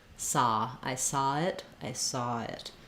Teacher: when people are saying saw they may not always be that rounded they may say it a little bit like saw I saw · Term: cot caught merger